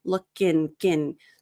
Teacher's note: the K actually sounds more connected to the next word, into.